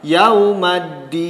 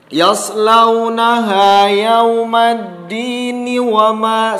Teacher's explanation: Apabila waqaf maka berhenti pada ayat 15, kemudian nun disukunkan.